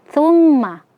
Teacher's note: mim yang bertasydid gunnah musyaddadah dibaca 2 harokat